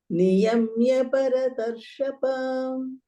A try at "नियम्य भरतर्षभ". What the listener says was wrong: Instead of saying ba, say bha, bharatarsha, bha. Again Mahaprana.